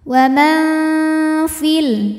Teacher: Ikhfa awsat karena ada nun sukun menghadapi huruf fa. Maka nun dibunyikan samar-samar, siap-siap menuju fa disertai dengung. Samar dan dengungannya sama karena fa makhrajnya pertengahan, tidak terlalu dekat, tidak terlalu jauh dari nun. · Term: ikhfa hakiki